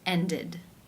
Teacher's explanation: Therefore, it is case 3, ended, where the ed is pronounced with the I as in sit and the d sound